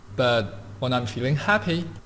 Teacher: he's using intonation and a little bit of stress on happy to show contrast